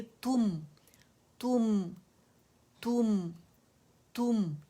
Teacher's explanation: तुम नहीं बोलेंगे उर्दू का, तू है तो मीम सुकून पे, जब मीम सुकून अपने से पहले ता के साथ मिला गया तो तुम की आवाज़ आनी चाहिए, और इसको हमने यानी प्रोलॉन्ग नहीं करना